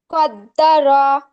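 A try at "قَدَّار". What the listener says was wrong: তার বলার সময় কিন্তু টান হয়ে গেছে, হ্যাঁ। কদ্দার। কদ্দার।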